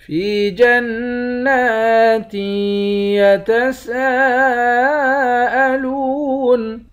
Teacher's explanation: یا کے ساتھ ملا کر ایک الف کے مقدار کھینچیں گے، نون مشدد پر غنہ کریں گے